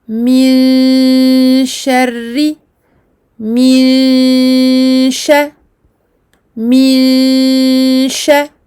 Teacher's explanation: La rouna ici est buccale et nasale, donc on entend un son qui sort de la bouche et du nez. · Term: ghunna de ikhfa